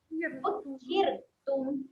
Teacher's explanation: ra di sini dibaca dengan ra yang nipis · senyum saja huruf ra ni, tak perlu tebalkan.